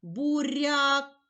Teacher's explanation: буква я у слові буряк пом'якшила попередній приголосний і позначає голосний звук а